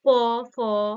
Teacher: জীব মুখবিরের মধ্যে কোন জায়গায় গিয়ে স্পর্শ করছে না কি হচ্ছে শ্বাসবায়ু ডিরেক্ট ঠোঁটে এসে আটকাচ্ছে · করছে না কি হচ্ছে শ্বাসবায়ু ডিরেক্ট ঠোঁটে এসে আটকাচ্ছে তাই না ঠোঁটে এসে বাধা প্রাপ্ত হচ্ছে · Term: অষ্ঠ ধ্বনি